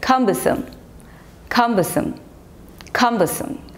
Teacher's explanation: So the stress is on the first syllable